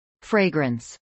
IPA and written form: ˈfreɪɡrəns (fragrance)